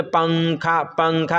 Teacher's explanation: اخفا یعنی کہ اس نون کی آواز کو ناک میں چھپا کر پڑھیں گے اور زبان کی نوک جو ہے وہ تالو سے ہٹا کر پڑھیں گے، جیسے اردو میں پنکھا، پنکھا کے نون کو پڑھتے ہیں.